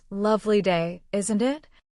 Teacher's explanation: and I repeat it slowly, helping you feel the rising tone at the end.